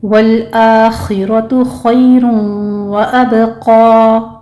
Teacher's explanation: والآخرۃ خیر وابقی، والآخر میں لام کو سٹاپ کریں گے، حمزہ کے اوپر فتحہ قائمہ ہے، 2 کاؤنٹ کر لیں گے، خو کو پر پڑھنا ہے، را کو بھی پر پڑھنا ہے،